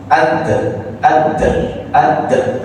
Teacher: Kalau dal kelihatan karena makhrajnya lidah. Lidah dengan gigi atas